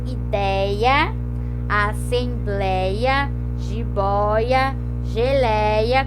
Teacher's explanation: caiu o acento, mas ele continua sendo aberto